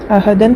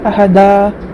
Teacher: 2 زبر پر وقف کرنا ہو تو 1 زبر کے ساتھ 1 الف پڑھا جاتا ہے، جیسے احدن سے احدا۔